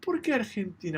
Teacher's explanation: Almost sounds like she's stressing the por first.